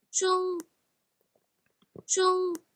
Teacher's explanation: So that almost sounds like a flat sustained note. 中 and you can see that from the pitch contour graph, it's also pretty flat.